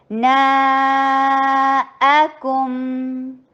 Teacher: نا 4 حرکہ لانگ، نا الگ اور آ کی آواز الگ آئے